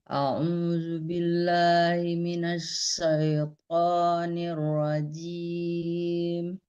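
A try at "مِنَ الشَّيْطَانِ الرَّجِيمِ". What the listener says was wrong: Minasyai syai. Jangan soy, kalau soy itu short ya. Syai sama soy beda ya.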